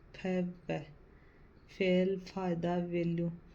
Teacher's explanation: ये दंतोष्ट दांत और होठ दोनों से बोले जाते हैं